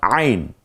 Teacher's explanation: কণ্ঠনালীর মধ্যখান থেকে উচ্চারিত হয় আইন